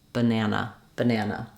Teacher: the middle syllable is longer and it has the clear vowel the first and last syllables are shorter in duration and they have reduced vowels